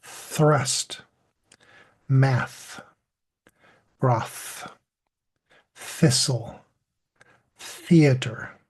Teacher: Notice that there's no puff of air before you say that soft TH.